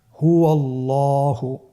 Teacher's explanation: এখানে আল্লাহ শব্দের দ্বিতীয় লামটি মোটা হবে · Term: লাম মোটা